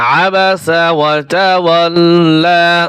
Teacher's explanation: মাদের হরফ খাড়া জবরে চিকন চিহ্নে ওয়াকফ করলে 3 আলিফ টান হবে না, 1 আলিফ টান হবে।